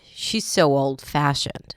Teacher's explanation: The stress was on fashioned.